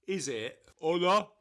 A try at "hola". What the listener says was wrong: It's not. It's hola. It's hola. No, you say it too hard. It's like hola. It's like not there, but it's there.